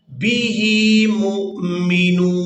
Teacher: मीम को हमजा साकिन के साथ मिलाना है, तो झटके के साथ अदा करना है